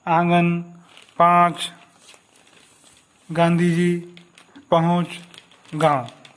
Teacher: अनुनासिक, इसमें नाक से कम और मुंह से अधिक मात्रा में सांस निकलने पर लगाया जाता है